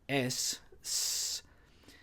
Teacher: the sibilance of the initial unvoiced consonant s